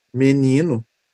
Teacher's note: Esse segundo e é pronunciado com mi, com som de i.